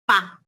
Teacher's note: para pronunciar solo la P, ustedes apretan los dos labios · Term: bilabial